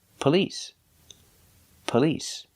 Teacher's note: The stress is on the second syllable. Police. It's not on the first syllable.